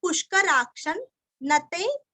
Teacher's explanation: क्ष के ऊपर आघात, हल्का सा न का उच्चार करना है, आधा न का उच्चार करना है